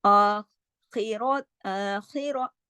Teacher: خواہ موٹا پڑھا جائے گا اور را بھی یہاں موٹا پڑھا جائے گا ، کیوں؟ کیونکہ را پہ زبر ہے اور را کنڈیشنل ہیوی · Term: موٹا حرف